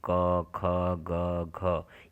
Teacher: तो इसमें देखिए, कंठ ध्वनियों के लिए हम बता देते हैं कि जो कंठ ध्वनियाँ होती हैं वो हमारे क वर्ग के जितने भी वर्ण हैं वो सभी क्या कहलाते हैं, चारों वर्ण जो हैं वो सभी कंठ से निकलती हैं